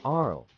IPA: ˈɡərɡəl